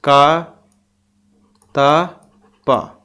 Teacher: क त प यह अघोष वर्ण होते हैं अघोष वर्ण और अल्पप्राण अल्पप्राण भी आ जाते हैं